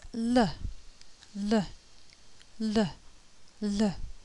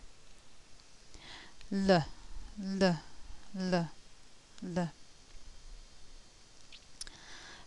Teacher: the tongue contacts the ridge behind the upper teeth and the a escapes down both sides of the tongue l